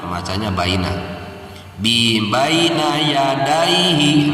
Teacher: Huruf iya ketika disukunkan setelah harokat patah itu namanya madlin.